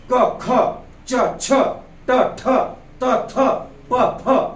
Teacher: हे कठोरतेने विचारले जातात हे फक्त श्वासाच्या माध्यमातून बाहेर टाकले जातात कसं श्वासाच्या माध्यमातून क ख च छ ट ठ त थ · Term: अघोष